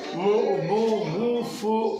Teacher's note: پیش کی آواز آگے کو جاتی ہے اور ہونٹ گول ہوتے ہیں